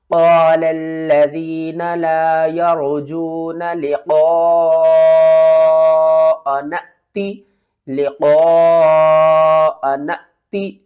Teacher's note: اس مد کو ہم کہتے ہیں مد متصل، 5 الف کے برابر، اس کو بھی کھینچ کر پڑھنا ہے